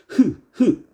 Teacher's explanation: 이 히읗이라는 녀석은 흐 해가지고 목구멍 사이의 마찰을 통해서 만들어내죠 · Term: 목청 소리